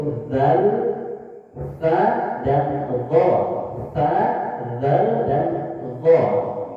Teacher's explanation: ujung lidah bertemu dengan ujung gigi seri atas